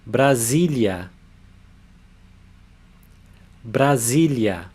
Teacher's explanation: the consonant S. When it comes between two vowels, it has a Z sound. So this syllable is Z.